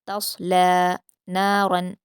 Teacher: یہاں پر صاد کو پر پڑھیں گے لیکن تا اور لام کو باریک پڑھیں گے۔ تصلی نارا، را کو پر پڑھیں گے۔